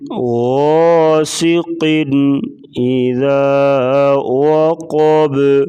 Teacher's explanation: با ساکن ہوگا تو اس کے اوپر قلقلہ کریں گے، یعنی ساکن حروف کو ہلا کر پڑھنا، اس کو قلقلہ کہا جاتا ہے۔